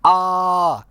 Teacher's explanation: जब आप आ बोलते हैं तो आपका मुख और आपका जीभ के बीच का डिस्टेंस बहुत अधिक होता है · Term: विवृत स्वर